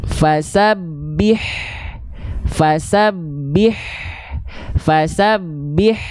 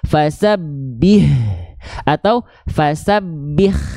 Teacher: Tepat dari bagian tengah tenggorokan kita.